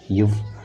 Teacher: இது மேல்வாய் பல்லை கீழ் உதடு பொருத்துவதால் பிறக்கின்றது.